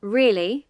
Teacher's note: The pitch rises, then falls sharply. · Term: Rise-fall intonation